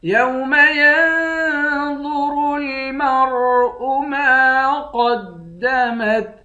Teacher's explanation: یا کو نون سے ملا کر نون پر اخفا کریں گے، وا اور را دونوں کو موٹا پڑھیں گے۔ میم کو را سے ملا کر را کو بھی موٹا پڑھیں گے۔